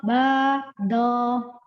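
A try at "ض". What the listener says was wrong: Do-nya kurang terbuka lagi. Kurang dibuka mulutnya. Mengangkat pangkal lidah itu membantu membuka mulut ya. Ko, ba, do, dibuka.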